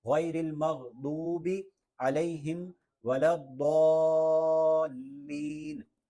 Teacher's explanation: ضاد کو لمبا کرنا ہے اور اس طرح لمبا کرتے کرتے اس کو لام سے بھی ملا دینا ہے